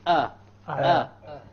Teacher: You find it coming right from the bottom of the throat. There is nothing below this except that it's a part of the windpipe. · There is nothing below this except that it's a part of the windpipe. So the lowermost part of the throat, this is where the hamza originates from.